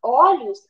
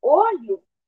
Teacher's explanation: Quando a gente fala olhos, a vogal O ela é aberta por causa do som. Quando a gente fala olho, o som da vogal O é fechada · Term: plural metafônico